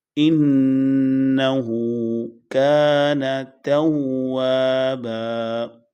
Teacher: نون کو بالکل لمبا نہیں کریں گے کیونکہ اس کے بعد الف نہیں ہے